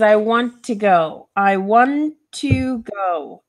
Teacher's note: want ends with the T sound to begins with the T sound so we're gonna join that together